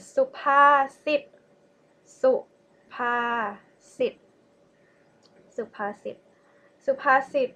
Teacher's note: The next one is supasit, supasit, supasit, supasit means proverbs. Okay, the first one is low tone, second one is mid tone, and sit also low tone